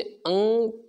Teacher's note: अंग में कंठ और नासिका दोनों का उपयोग होता है, अतः इसके उच्चारण स्थान कंठ और नासिका होगी। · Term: अनुनासिक